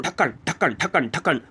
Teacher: तो ये क्या है कि बहुत झटके के साथ जब जीभ नीचे आती है तालु को छूते हुए, वही उत्क्षिप्त व्यंजन है।